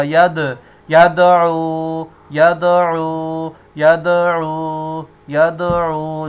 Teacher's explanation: یہ حروف قلقلہ ہیں، تو یہاں پر بھی جو ہے دال قلقلہ ہوگا